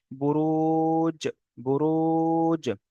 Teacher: আচ্ছা, জিমের উপর সাকিন এসছে, এটি হলো হরফে কলকলা 5টি অক্ষরের মধ্যে এখানে জিম এসছে, তাই জিমকে মাখরাজের সঙ্গে ধাক্কা লাগিয়ে একটু আলাদা হয়ে যাবে